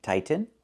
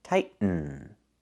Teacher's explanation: You can say tighten and make a real T, tighten, or you can make a stop T, tight, and then go to the N, tighten